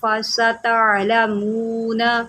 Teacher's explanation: یہاں پر سین کی سیٹی نکالیں اور تا کے بعد عین ہے، اس کو عین نکالیں۔ تعلمون نہیں پڑھیں گے، اس کو پڑھیں گے فستعلمون من هو فی ضلال مبین۔